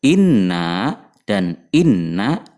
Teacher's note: dibaca ghunnah atau dengung dengan panjang dua harakat karena ada tasydid pada huruf nun